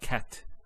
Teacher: a stop on the letter T so we say cat so the T doesn't have any vowel associated with it is actually just a stop on the T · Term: sukoon